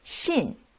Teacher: fourth tone the tone goes down